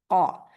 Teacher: जुबान की नोक बिल्कुल नीचे है, उसको कोई फर्क नहीं पड़ा, क्योंकि ये नोक से अदा नहीं होता। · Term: कौफ